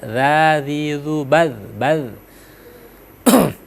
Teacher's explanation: Nah, sekarang di ayat ke-6 itu zalnya, zal juga hati-hati juga ya, itu zal 2 ya, yang di ujung lidah makhrajul hurufnya za ya